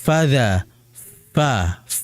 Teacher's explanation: bibir bawah bagian dalam atau batni syafah, perut bibir bawah yang ditempelkan atrafi tsanaya, ujung gisari atas. Fadha, fa, sehingga keluar di situ ada yang namanya hams. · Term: huruf fa